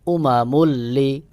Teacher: এক পেশ উচ্চারণ করে পরের হরফ লাম কে ধরতে হবে